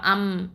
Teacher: அதாவது இந்த மீம பொறுத்தவரைக்கும் உதட்டோட ஈரம் இல்லாத பகுதியில இருந்து உச்சரிக்கக்கூடிய எழுத்து ஓகேவா அதாவது உதடுகள் வந்து லேசா சேரும்போதே இந்த மீம் உச்சரிப்பு வெளிப்பட்டுடும். சரியா சோ இப்ப வந்து இப்ப உதாரணத்துக்கு மீம் பதஹ ம இப்ப அம் அப்படின்னு சொல்லி பார்த்தாலே உங்களுக்கு தெரியும் இரண்டு உதடுகளும் இணைக்கும் போதுதான் அந்த மீம் வந்து வெளிப்படுது. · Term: இரு உதடுகளையும் இணைச்சு